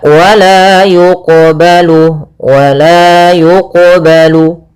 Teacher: Ini qalqalah sugra yaitu kita membacanya tidak boleh ada sakta. Tidak boleh mantul.